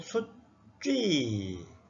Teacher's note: 숫쥐도 수쥐 읽지 말고 숫쥐 이렇게 된소리로 읽으라는 겁니다